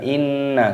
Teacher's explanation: berharokat tasydid ini dibaca gunnah berdengung, didengungkan